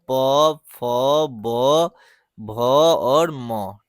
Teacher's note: प वर्ग जो है ओष्ठ के सहायता से बोला जाता है।